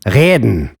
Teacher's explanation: nowadays, the throats of millions of German speakers have been infected by the guttural R